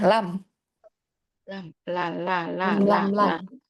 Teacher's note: Antara tepi lidah secara bersamaan bertemu dengan gusi gusi atas.